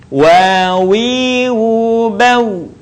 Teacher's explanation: Diucapkan dengan indhimamus syafatain atau mengumpulkan dua bibir kita. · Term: huruf wa